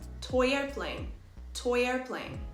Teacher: toy ends with the oi sound and the next word would be airplane again we use the ya sound to link these words · or oi and the second word begins with any vowel sound we insert a ya sound to link them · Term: linking vowel to vowel